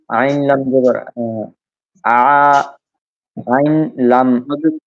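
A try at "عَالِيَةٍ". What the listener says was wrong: আইন লাম একসাথে না, আইন আলাদা। আইন আলিফ জবর আ, লাম জের লি, আলি, ইয়া জবর ইয়া, আলিয়া, তা দুই জের তিন, আলিয়াতিন।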